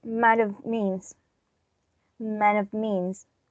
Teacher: But as in the phonetic transcription, reduction already occurred, we can notice a vowel change, which is a change from the O to a schwa